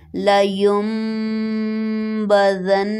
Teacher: جب بھی نون ساکن کے بعد با ہو تو نون ساکن کی اواز کو میم میں بدل دیا جاتا ہے اور غنہ کیا جائے گا